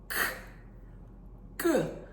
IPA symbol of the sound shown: k